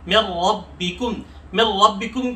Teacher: من ربکم کے را پر جو ہے ادغام تو کیا جائے گا، یعنی ملا کے پڑھا جائے گا، البتہ غنہ نہیں کیا جائے گا، ادغام بلا غنہ اسے کہہ سکتے ہیں۔